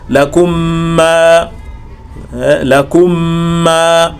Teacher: Nahau asema wa huwa almim, wa huwa almim, nayo ni mim ma tatwilil ghunna, pamoja na kurefusha ghunna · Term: idgham